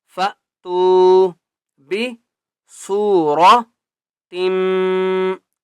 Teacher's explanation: سین کو ایک الف کی مقدار کھینچ کر پڑھیں گے اور را کو موٹا کر کے پڑھنا ہے